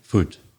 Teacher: your two belfast and scottish vowel sounds are shorter